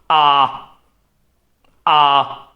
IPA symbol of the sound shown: ɑ: